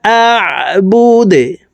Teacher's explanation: দাল কলকলার হরফ নিচের দিকে ধাবিত করে ধাক্কা দিয়ে দালকে সাকিন করতে হবে